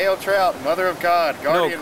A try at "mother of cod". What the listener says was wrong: No, cod. No, you said god. The trout's the mother of cod. Hail trout, mother of cod.